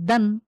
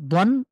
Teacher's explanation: একটা হলো দদ ২ জবর দন, আরেকটা হলো দাল ২ জবর দান। একটা স্বাভাবিক, আরেকটা একটু গোলাকার করে আমরা মুখের ভেতরে একটু মোটা করে পড়ব।